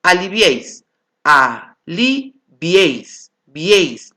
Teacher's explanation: Suena más la E. Por lo tanto, forma un triptongo.